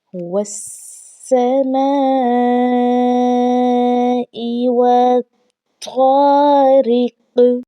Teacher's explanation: واو کو طا کے ساتھ ملا کر پڑھا جائے گا اور مشدد کی وجہ سے طا پر سختی کی جائے گی · قاف ہے جو کہ حروف قلقلہ میں سے ہے تو یہاں پر قلقلہ خوب ظاہر ہوگا